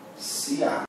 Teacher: Eu aqui tenho um ditongo, só que vem do mais fraco para o mais forte. Quando é do mais forte para o mais fraco, ele decresce. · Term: ditongo crescente